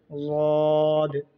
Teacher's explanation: वाद का मखरज जो ज़ुबान की करवट और ऊपर की दाढ़ों की जड़ में लगाने से वाद अदा होते हैं